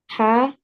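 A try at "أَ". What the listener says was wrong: Hamza zabar, not ha zabar. Hamza zabar, ha not a. Hamza zabar a. So here is also Hamza Zabar not Ha Zabar ha. This is not Ha. This is A. Hamza Zabar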